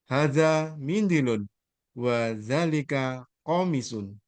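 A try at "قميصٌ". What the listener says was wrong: Komisun, mi-nya panjang. Ko-nya pendek, mi-nya yang panjang.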